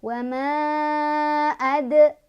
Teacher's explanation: Wa ma di sini ada qalqalah sugro karena ada huruf qalqalah yaitu dal yang sukunnya sukun asli atau sukun sudah dari asalnya. Cara bacanya memantul tapi pantulannya kecil aja, ngalir ya, karena kita mengucapkan huruf berikutnya.